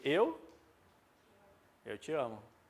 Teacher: Tanto ele é átono que esse som do e sai como som de i. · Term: monossílabo átono